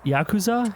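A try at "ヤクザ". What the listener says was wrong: Yakuza. Yeah, it's very Western of you. Well, it's the way that we stress syllables versus the way that, like, the Japanese language just doesn't stress any syllables generally.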